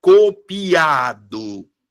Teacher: no caso ó a vogal mais forte é o a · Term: sílaba tônica